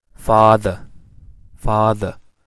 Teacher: in father, the a is the low back vowel